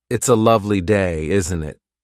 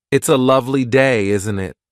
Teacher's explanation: notice the upward tone at the end of isn't it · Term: intonation